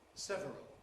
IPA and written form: ˈsevərəl (several)